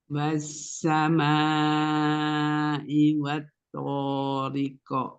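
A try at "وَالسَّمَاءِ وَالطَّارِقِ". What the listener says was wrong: Nah, di sini ya, yang ada huruf tonya ya, mau lebih diangkat lagi isti'lanya supaya itbaqnya dapat ya. Wassama'i wat-thoriq. Dan qalqalah di akhir dia setengah harokat saja, memantul ringan. Wat-thoriq.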